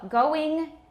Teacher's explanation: it's not all the way to E, it's not I, it's somewhere in between. But we use the I.